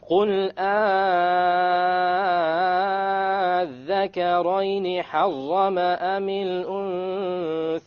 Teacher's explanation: Because you have a shadda. You have a shadda on the dhal. And before that was the harf mad. So this becomes 6. You have to make it the longest. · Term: Al-mad al-lazim